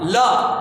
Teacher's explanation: पार्श्विक व्यंजन। इसके उच्चारण में वायु जीभ के पास से निकलती है।